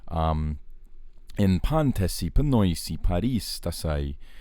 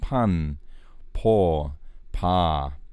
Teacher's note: all three of these words sort of start with an open vowel after the pi